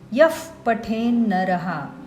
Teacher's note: विसर्ग आणि त्यापुढे प किंवा फ आले असेल तर विसर्गाचा उच्चार फ सारखा करायचा